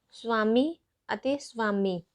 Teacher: ਵੱਵਾ ਅੱਖਰ ਇੱਥੇ ਅੱਧ ਸਵਰ ਵਾਂਗ ਕੰਮ ਕਰ ਰਿਹਾ ਹੈ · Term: ਅਰਧ ਸਵਰ ਵਿਅੰਜਨ